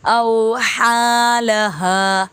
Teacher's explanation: حا باریک پھر ہا موٹا